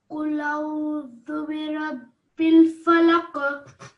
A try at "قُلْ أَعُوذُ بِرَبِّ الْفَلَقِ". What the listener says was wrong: Just your ayn, try to pronounce that from your throat, okay?